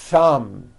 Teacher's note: Notice how long I'm holding the TH sound. Thumb. It's not good enough just to put your tongue between your teeth and say a TH word like this.